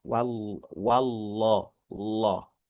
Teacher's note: untuk lafaz jalalah yang tebal, itu vokal itu dipaksa ke arah atas, bukan ke la. Kalau gini la, la. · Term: huruf lam yang tebal